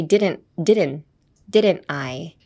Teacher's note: When, um, people try to pronounce didn't or didn't I, when they put didn't and some word together, they tend to emphasize the T too much. So I would advise you to drop the T actually, and just say didn't didn't, didn't I. · If you add a little pause — like a small tsu — between didn't and I, it'll sound more native.